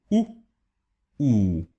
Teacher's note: the U without any accent and the U with one accent are the same sound, just shorter and longer forms of each other.